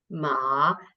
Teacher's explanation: You start mid, you go down, and then you go up again. Ma. It's also called the croaky tone because your voice should croak a bit when you go down and up. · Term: third tone